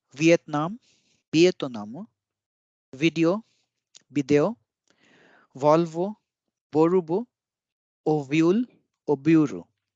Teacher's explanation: हर जगह पे ब की ध्वनि आ रही है, जहां पे भी वी है वहां पे बी की ध्वनि आ रही है